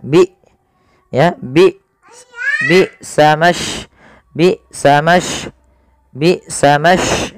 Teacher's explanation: Sifat jahar adalah sifat yang dimana dia tertahannya nafas, dan syiddah adalah dia tertahannya suara. Maka ketika hamzah sukun harus ada penahanan suara dan penahanan nafasnya.